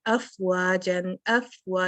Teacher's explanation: फा और वाव ये दोनों होंठों से अदा होने वाले हरूफ हैं। तो फा फर्रा मिन लुब्बिन में है, तो अफ आपको इस पे हम्स भी करना है, मीन्स के एयर फ्लो लेके आनी है।